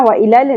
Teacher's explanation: لام ساکن پہ قلقلہ نہیں کرنا